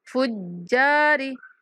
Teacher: جیم سختی کے ساتھ پڑھتے ہوئے کھینچ کے پڑھیں گے